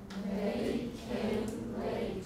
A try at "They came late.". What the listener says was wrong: Make the A longer. Don't make the M too soon. Don't say the M too soon. Came. 那个 M 比较要延后一点.